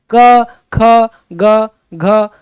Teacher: कंठ मतलब हमारे कंठ से उच्चारित होता है